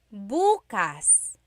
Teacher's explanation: If you say buas emphasis is on the first syllable that means tomorrow